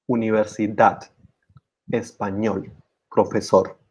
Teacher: And we will explain you to you why this is important. So in all these words, universidad, español, profesor, reloj, actriz, vivir, the stress falls on the last syllable